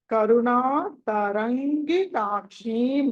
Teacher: అనుస్వారం ఉంది ఆ తర్వాత గ ఉంది క వర్గంలోని పంచమ అక్షరం వస్తుంది దాని స్థానంలో